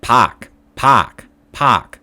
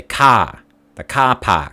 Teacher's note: if there's an ar sound it's not r but ah almost